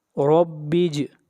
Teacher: اب دعا پڑھیں گے. ربج را کو موٹا پڑھیں گے، را کے اوپر زبر ہے